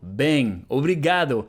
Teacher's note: And the final O sounds a bit like U